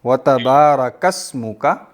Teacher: یہاں پہ چونکہ اسم کی حمزہ وصل والی ہے نا, پیچھے کاف موجود ہے, تو اس کو پڑھنے میں ڈراپ کر دیں گے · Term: حمزۃ الوصل